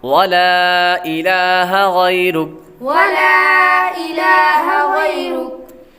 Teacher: اور غائن حروف مستعلیہ میں سے ہے اس لیے اس کو پر پڑھیں گے